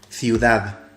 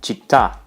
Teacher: But the soft sound is different in each language. In Spanish, the soft C sounds like th or s. In Italian, it sounds like ch.